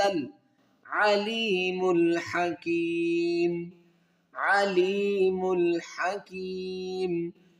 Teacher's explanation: یا ساکن سے پہلے زیر ہے تو اس کو یا مدہ کہیں گے، اس کو ایک الف مقدار کھینچیں گے